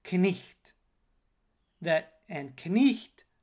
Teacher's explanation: was indeed pronounced the n was pronounced the i was pronounced the gh was pronounced it had a sound that corresponds to the ipa symbol x and the t was pronounced t so we got the pronunciation